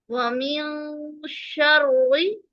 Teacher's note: نون کی آواز کو چھپانا ہوگا ناک میں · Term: اخفاء حقیقی